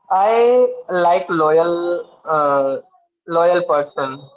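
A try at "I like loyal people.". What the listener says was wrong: Okay, very good.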